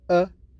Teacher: lips are neutral when we produce the schwa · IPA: ə